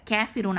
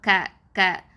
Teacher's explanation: கே sound ரொம்ப சாய்க்கக்கூடாது. இமாலா அப்படின்னு சொல்லுவாங்க, ரொம்ப சாய்க்கிறது, அப்படி பண்ணக்கூடாது, அதுக்கு அனுமதி இல்லை. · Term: கேஃப் ஃபத்ஹா க